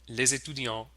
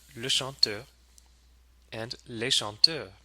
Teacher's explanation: we hear that Z liaison between les and étudiant.